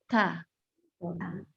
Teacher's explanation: Ta harus keluarkan hembusan nafas.